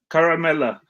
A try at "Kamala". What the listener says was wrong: No, not Car. There's no R. There's no R. Kamala. Kamala. K works. K.